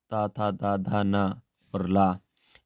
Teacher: इन वर्णों को बोलेंगे तो आप देखेंगे आपकी जीभ बिल्कुल दांत के पास आ रही है, इसलिए ये दिन को दंतों से कहा गया है।